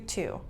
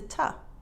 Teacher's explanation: But in real life, to is often reduced to ta.